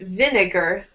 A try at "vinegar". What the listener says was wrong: Yes. Vinegar.